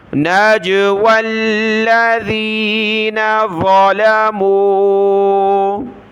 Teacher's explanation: جیم پر قلقلہ ہوگا، نون پر غنہ کریں گے، نون مشدد ہے۔